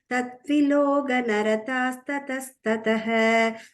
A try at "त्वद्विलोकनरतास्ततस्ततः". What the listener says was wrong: Until the second line, Twadvilokana. You said Tad, Kramat, Twadvilokana. Yeah, it'll be two it there. So it'll be like it and then Twadvilokana.